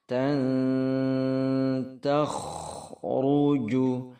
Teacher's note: khonya tafkhim tebal, agak setengah monyong, jangan dibaca takh tapi takh.